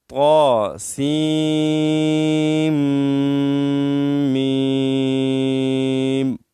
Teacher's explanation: صحیح طریقہ یہ ہے کہ سین کو میم کے ساتھ ملائیں، کیونکہ میم مشدد ہے تو مشد کی وجہ سے ہم سین کو میم کے ساتھ ملائیں گے.